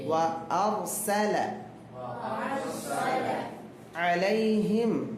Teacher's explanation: முன்னால் உள்ள எழுத்துக்கு மேல என்ன வந்திருக்குதுமா? ஃபத்ஹா வந்திருக்கனால சுக்கூன் பெற்ற ராவை தஃப்ஹீம் வல்லினமாக ஓத வேண்டும்.